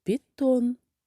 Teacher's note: в слові пітон наголошений другий склад тон